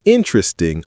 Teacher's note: Not interesting with four syllables. It's interesting with three syllables compressed the middle.